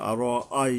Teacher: আর আই, এই যে হামজার উপরে জবর আছে, আর আই, এই হামজাটা মূলত হলকের গোড়ার থেকে মোটা করে শক্তভাবে আদায় করতে হয়, নাহলে আলিফের মতো হয়ে যায় এবং সেটা উচ্চারণ সঠিক হবে না।